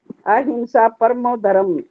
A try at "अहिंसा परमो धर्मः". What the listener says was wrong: हाँ, विसर्ग भी है ना, विसर्ग भी है धर्म के बाद।